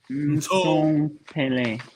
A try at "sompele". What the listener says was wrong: Yeah. It's in the sun, it's in the blood. Yeah, well done. I like the tone.